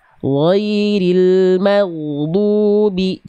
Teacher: Du jangan kepanjangan. 2 harokat Bunda.